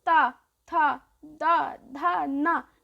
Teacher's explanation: जीभ है वो दांतों को स्पर्श कर रही है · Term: ता वर्ग